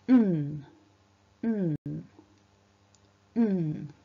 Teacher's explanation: we vibrate the throat whilst simultaneously releasing the sound through the nose. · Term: N sound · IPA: /n/